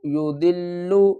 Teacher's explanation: ضاد کو لام سے ملائیں گے، لام کے اوپر سختی کریں گے